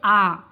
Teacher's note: विव्रत स्वर में क्या होता है, पूरा मुंह खुलता है। जब विव्रत स्वर का उच्चारण करते हैं, क्वेश्चन बन के आता है ये कि विव्रत स्वर कौन सा है, तो इसमें क्या है दोस्तों, इसमें पूरा मुंह खुलेगा।